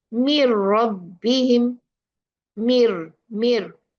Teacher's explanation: We see min and then we see the ra, we will say mir rabbihim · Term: complete idgham